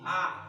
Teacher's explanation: A ini sifatnya nafasnya ditahan.